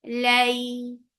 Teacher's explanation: Make it 2 counts long and make it soft because this is lean.